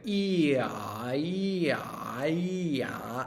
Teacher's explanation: you can see that your tongue went down for the ah, and an E up for the E